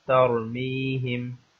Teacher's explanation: را کے اوپر جزم ہے اور اس سے پہلے زبر ہے، تو اس لیے اس را کو موٹا پڑھا جائے گا، اس را کو تفخیم کے ساتھ پڑھا جائے گا